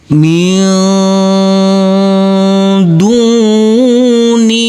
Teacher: Di sini ada huruf nun yang bertemu dengan huruf dal. Maka huruf nunnya harus kita samarkan karena ini adalah bacaan ikhfa.